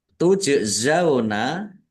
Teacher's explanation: Tujzauna jim sukun bacaan qalqalah dibaca memantul ditampakkan pantulannya. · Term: kolkolah